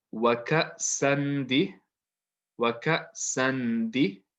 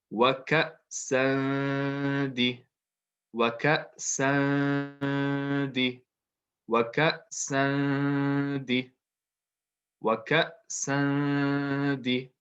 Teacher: So it's still there, but it's not really a strong n sound because our tongue is not touching the top of the mouth. The tongue is just floating, and the sound comes from the nose. So it's more like waka, and then I'm just gonna do a little squiggly line, waka sandi, because it's not really like any. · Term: light nasal sound